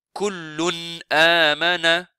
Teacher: Kullun, ce tanwin. Il ne faut pas faire idgham avec hamza. C'est izhar. On montre noun complètement.